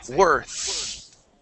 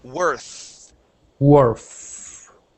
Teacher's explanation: you're adding a t sound at the end saying worth okay uh we want to eliminate that t sound